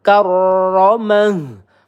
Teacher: ro bertasdid ditekan sama ro-nya tebal ya